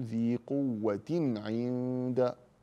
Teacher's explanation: فانا اظهر التنوين عند العين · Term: الاظهار